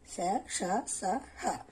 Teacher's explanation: 5 ఊష్మాలు, ఊది పలుకబడే అక్షరాలు